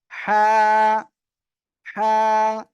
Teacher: গলার মধ্যে চেপে আমরা উচ্চারণ করব